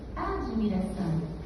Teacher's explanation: Suarabhati no caso da palavra admiração, esse D é uma consoante muda. O I que a gente escuta, ele é fônico, mas ele não é registrado, ele não é gráfico.